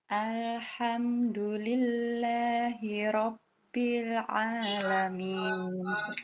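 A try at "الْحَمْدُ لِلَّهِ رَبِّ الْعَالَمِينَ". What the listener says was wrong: Rabbil, mulutnya dibuka. Alhamdulillahi Rabbil Alamin.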